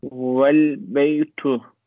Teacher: The initial vowel, which is omitted when preceded by a word